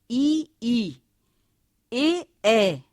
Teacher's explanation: जीवा के अग्र भाग को उठाकर जिन स्वरों का उच्चारण होता है अग्र स्वर कहते हैं